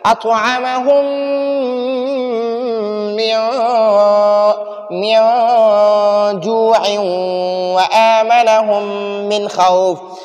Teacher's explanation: ادھر میم ساکن کے بعد دوسرا میم ہے تو ادھر بھی ادغام بھی کریں گے، غنہ بھی کریں گے، اس میم ساکن کو دوسرے میم میں مدغم کریں گے، داخل کریں گے، اور ساتھ ساتھ ہم غنہ بھی کریں گے